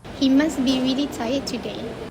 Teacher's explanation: It is supposed to be must, but the speaker said it as must, omitting the t sound. This happens because must, the word must, is followed by the word be, which starts with another consonant. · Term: elision